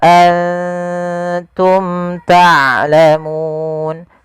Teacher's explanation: Izhar artinya jelas syafawi berkenaan dengan bibir. Karena makhraj daripada huruf mim daripada bibir kita. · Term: izhar syafawi